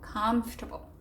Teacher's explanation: it's almost like you get rid of the A in table and the O-R as well, or it just becomes a short, comfortable.